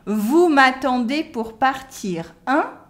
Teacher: because it's a question the voice goes up